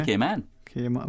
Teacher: That is, like when we say the alphabet a, and then the first syllable rhymes with say, and we render the a short in the second syllable, man.